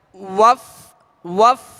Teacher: واو میں ہونٹ گول ہوں گے اس کی ادائیگی میں